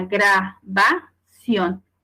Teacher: es un ejemplo de palabra aguda, porque su sílaba tónica es ción. Y me dice que la voy a acentuar cuando termina en una N, S o vocal.